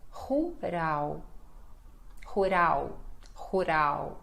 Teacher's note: L, final de palavra, som de U.